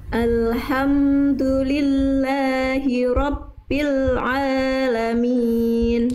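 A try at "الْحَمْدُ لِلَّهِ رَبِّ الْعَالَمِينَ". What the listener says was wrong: Sip, sekali lagi Bunda, tinggal hak kecilnya alirkan bisikannya lagi sedikit lagi. Alhamdulillah, ha dari tengah tenggorokan. Alhamdulillahi rabbil alamin.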